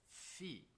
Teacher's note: consoantes que cerram, que fecham a passagem do A a partir dos nossos lábios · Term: oclusivas labiais